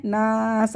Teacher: الف مدہ آ گیا، الف سے پہلے زبر، اس کو بھی ہم نے کھینچ لیا